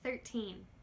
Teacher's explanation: Remember, we need to pay attention, number 1, to the little N sound at the end of - teen numbers, like 13. Again, in these teen numbers we are making a very clear T sound. So pay attention to the N and the T.